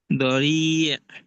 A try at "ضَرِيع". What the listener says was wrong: আলিফ টান। কেন একালিফ হবে? মদের হরফের পরের হরফে ওয়াকফ করলে মধ্যে আরজি, গত ক্লাসে পড়াইছি মধ্যে আরজি, মধ্যে আরজি, তিন আলিফ টান না? রহিম, গফুর, ওইরকম রি।